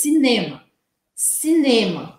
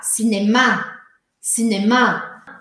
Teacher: em francês eu preciso colocar a sílaba forte no final e aí vai virar cinemar cinemar é o mesmo palavras mesmo